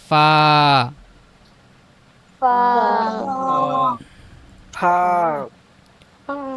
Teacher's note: দাঁত নিচে ঠোঁটে লাগবে